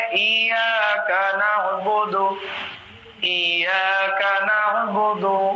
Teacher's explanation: بیچ حلق سے جب ادا ہوگا تبھی عین ہوگا